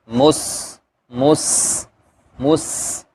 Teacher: سین کے اندر بھی صفت صفیر ہے، یعنی سیٹی کی طرح کی آواز ، مس مس مس، لیکن یہ موس صاد کی طرح نہیں